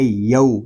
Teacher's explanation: یا کو ہم کھینچ کر نہیں پڑھیں گے، یہاں پہ واو لین ہو رہا ہے، اور حروف لین کو بغیر کھینچے بغیر جھٹکا دیے نرمی کے ساتھ معروف پڑھیں گے